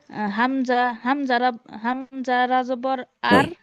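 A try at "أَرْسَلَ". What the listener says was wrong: হামজা রা হয়ে যাচ্ছে তো আপু, হামজা রা না, হামজা র জবর।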